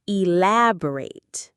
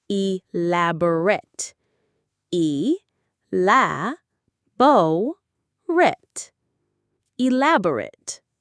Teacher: When we use it as an adjective to describe something, the ending becomes a soft ret sound.